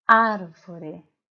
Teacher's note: na sílaba ar é mais forte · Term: sílaba tônica